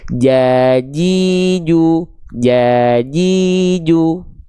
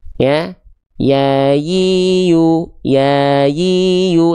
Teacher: Kalau huruf jim tengah lidahnya naik sampai nempel. Kalau huruf ya tengah lidahnya naik tanpa menempel.